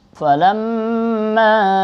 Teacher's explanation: mimnya ada tasydid, namanya gunnah, dibaca 2 harakat berdengung